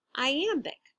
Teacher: i am big goes unstressed stressed short long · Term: iambic